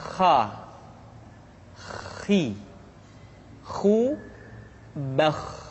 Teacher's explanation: diucapkan dengan mengalir nafas atau lebih praktisnya pengucapan huruf k persis terdengar seperti orang yang tidur dalam keadaan mengorok · Kha dikeluarkan dari pangkal tenggorokan Kha pangkal tenggorokan diucapkan dengan mengalir nafas atau lebih praktisnya pengucapan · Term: huruf kha